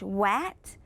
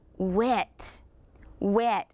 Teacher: The medial sound, or the middle, we changed that ah to eh.